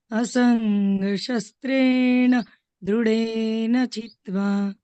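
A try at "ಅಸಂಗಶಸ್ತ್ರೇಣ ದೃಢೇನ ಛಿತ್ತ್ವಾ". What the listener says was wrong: ಅಲ್ಲಿ ಮಹಾಪ್ರಾಣ ಸ್ವಲ್ಪ ಗಮನಿಸಿ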